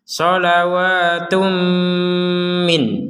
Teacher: min ini kita baca nun sukunnya sebagai nun sukun yang jelas kalau kita berhenti di min.